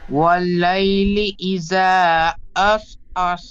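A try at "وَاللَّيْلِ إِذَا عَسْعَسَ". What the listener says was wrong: এখানে ওয়াল্লাইলি ইজা, এই জাল অক্ষরটি জার মতো উচ্চারণ হয়ে যাচ্ছে, একটু হালকাভাবে পড়বেন। আমরা জালের মাখরাজ পড়েছিলাম জিহ্বার আগা এবং সামনে উপরের দুই দাঁতের আগার সাথে থেকে জাল উচ্চারিত হয়। তো হালকাভাবে জিহ্বার আগাটি এই সামনে দুটো বড় দাঁতের সাথে হালকাভাবে ঠেকাবেন। জাল, জাল চেপে ঠেকাবেন না।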